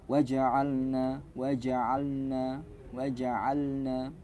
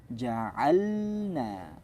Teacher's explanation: membaca huruf lam setelah huruf nun ini suruh menekankan mentahqiqan, menjelaskan huruf lam